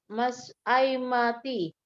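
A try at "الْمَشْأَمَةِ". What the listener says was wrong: Bukan ai. Yang sukun kan huruf shin. Mas'a. Nggak ada ya sukun, nggak ada ya sukunnya ya.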